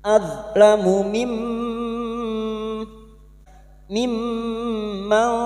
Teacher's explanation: nun sukun bertemu kaf ikfa hakiki kita samarkan bunyi nun sukun dan mendengung selama 3 harokat · mim yang bertasdid. Gunna mustadada kita dengungkan selama tiga harakat.